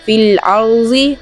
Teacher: ضاد کو موٹا پڑھیں گے اور را کو بھی موٹا پڑھیں گے